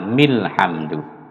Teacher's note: Kalau seperti itu, maka harokat terakhir ini harus dibunyikan. Jadi mi ini harus hidup, dibunyikan mi, lalu disambungkan dengan al. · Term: wasol